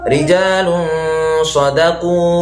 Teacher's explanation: Selain disamarkan, dia bacanya harus didengungkan, kadarnya 2 harokat. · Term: ikhfa